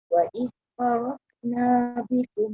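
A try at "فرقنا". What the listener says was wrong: Wa idh faraqa. Dia tak boleh faraqna, dia tak boleh ke. Qa. Faraqa. Dia kena raqa. Dia tak boleh roka. Dia bukan roka. Bonda tengok mulut bonda masa baca kan dekat kamera tu.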